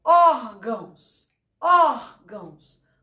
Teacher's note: o ó sai com maior intensidade.